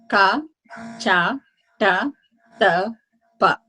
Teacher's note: And the others, these are all coming from 5 areas, remember? Ka guttural, cha palatal, ta cerebral, ta dental, pa labial.